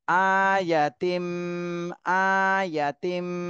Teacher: তানবিনের পরে ইদগামে বা গুন্নার হরফ, এজন্য গুন্না সহ মিলাতে হবে।